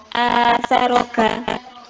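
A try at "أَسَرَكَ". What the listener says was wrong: Jadi kafnya mungkin sudah terbiasa dengan ada nafasnya. Ya, nanti pelan-pelan kurangi ya, nafasnya, udaranya.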